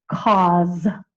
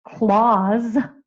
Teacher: Cause is written K A Z. It's spelled with an S, but I hear the Z. That's why it's K A U Z. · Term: final S or Z